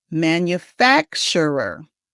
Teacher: you need to put the emphasis in the middle on fac.